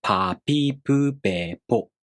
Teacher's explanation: This sound is called the voiceless bilabial stop. Voiceless means your vocal cords here do not vibrate when you make this sound. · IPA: [p]